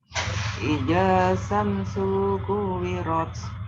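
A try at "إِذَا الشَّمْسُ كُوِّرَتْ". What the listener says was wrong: Iza langsung masuk shin. Izash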